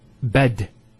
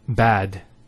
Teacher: notice the elongation of the a sound we don't say bed we say bad